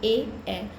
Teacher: जब हम ए और ए का उच्चारण करते हैं तब हमारा कंठ और तालु दोनों में जिह्वा स्पर्श होती है। कंठ से आवाज़ आती है और तालु में वो स्पर्श करती है ए। तो इसका आंसर हुआ कंठ तालव्य।